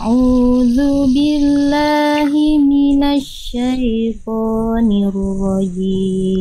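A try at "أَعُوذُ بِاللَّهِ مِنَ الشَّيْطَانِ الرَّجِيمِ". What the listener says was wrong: Tinggal nanti ditebal tebal-tebalkan huruf tebalnya, Bunda. Ee th ro itu kan huruf tebal, jadi diangkat pangkal lidahnya.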